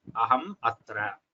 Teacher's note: aham is followed by akara, which is a swara, which is a vowel. So there you cannot use the anuswara. It has to be ma. It has to be aham atra, as shown on the right side. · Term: makara